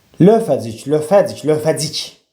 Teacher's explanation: Lövəcik sözündə vurğu sonuncu üzərindədir.